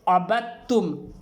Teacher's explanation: ان دونوں کا مخرج ایک ہی ہے، جہاں سے دال ادا ہوتا ہے وہیں سے تا بھی ادا ہوگا، اس لیے اسے ہمیں با کو ڈائریکٹ تا سے ملائیں گے، دال کو پڑھنے میں نہیں آئے گا. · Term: ادغام